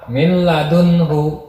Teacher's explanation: Nah, ini nun mati tadi kan memasukkan huruf pertama ke huruf kedua, yaitu lam. Terus huruf pertamanya itu dibaca memakai huruf kedua, dibacanya tanpa berdengung di min ladunhu. · Terus huruf pertamanya itu dibaca memakai huruf kedua, dibacanya tanpa berdengung di min ladunhu. Di nun matinya itu enggak dibaca, jadi langsung masuk ke lam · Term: idgham bila gunah